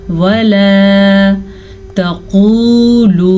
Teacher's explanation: वला तक़ूलू, लाम ज़बर अलिफ ला, वला तक़ूलू। 2 दफ़ा वाव मद्दा है तो दोनों दफ़ा खींच के पढ़ना है और क़ाफ को पुर पढ़ना है, ता को लंबा नहीं करना।